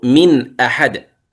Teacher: النون من طرف اللسان والهمزة من أقصى الحلق، حكمه الإظهار. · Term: المتباعدان